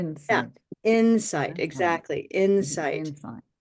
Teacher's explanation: Where's the stress? On the first syllable.